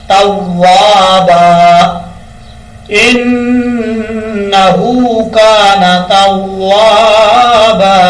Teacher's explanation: اب لاسٹ والا جو لفظ ہے یہاں پر لوگ کیا غلطی کرتے ہیں، توابا پڑھتے ہیں، توابا نہیں پڑھنا، واؤ کو پڑھتے وقت ہونٹ گول کریں گے، تا واؤ زبر تاؤ، واؤ الف زبر وا، توا، بعد زبر بن، توابن۔ جب وقف کریں گے دو زبر کے بعد الف آ رہا ہے، وقف کرتے ہوئے الف پڑھا جائے گا